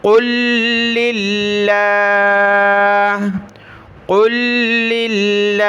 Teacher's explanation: اور دو لام دونوں لام کو سختی کے ساتھ پڑھنا ہے۔ لفظ اللہ سے پہلے لام پر زیر ہے تو اس کو باریک پڑھیں گے